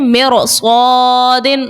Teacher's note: رو ساکن ہے اور اس کے بعد جو ہے صاد حروف مستعلیہ کا صاد ہے، تو اس صورت میں بھی رو کو موٹا پڑیں گے